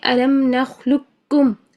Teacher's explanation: قاف نہیں پڑھیں گے بلکہ اکیلا کاف پڑھیں گے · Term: ادغام تام